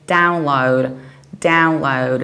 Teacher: in the American accent we do something totally opposite and we say download download so we stress the very first syllable